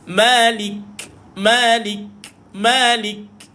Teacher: kalau Kaf sukun matikan k dulu pada Kaf baru keluarkan angin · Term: penekanan pada huruf Kaf